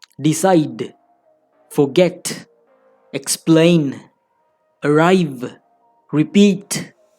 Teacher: In such verbs, usually we stress the second syllable. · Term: syllable stress